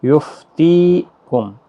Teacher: یہ تی جو ہے یہ یا مدہ ہے، اس کو کھینچ کر پڑھنا ہے، ایک الف کی مقدار کے برابر